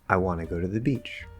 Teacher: I is not stressed, wa is stressed, na is not, go is stressed, to, the, these are not stressed, they're usually reduced to the, and then beach is stressed. · want, go, and beach are louder and longer